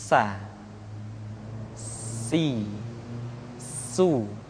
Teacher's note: Sin adalah sifat assfir di mana ketika kita mengucapkan huruf Sa ada suara tambahan yang menyerupai dengan suara belalang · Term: sifat as-safir